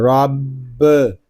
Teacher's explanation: را کو پر پڑھیں گے کیونکہ را کے اوپر زبر آ رہا ہے